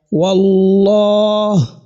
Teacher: the letter lam, as in the word of majesty, has been heavily pronounced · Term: heavy pronunciation